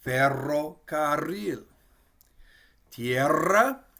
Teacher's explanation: So you can hear we kind of roll it. We're going to trill it. We'll pronounce the R a couple times. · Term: double R